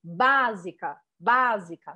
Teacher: na palavra básica ele me faz ver que a sílaba forte dessa palavra é a primeira falo básica básica né em francês nunca primeira sílaba poderá ser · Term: sílaba tônica